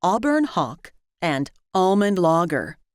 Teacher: many Americans and most Canadians pronounce Auburn Hawk and almond logger alike